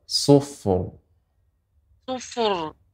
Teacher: Rok dibaca dengan tebal.